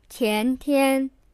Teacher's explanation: 前, the second tone, means before, and 天, the first tone, means day, or sky.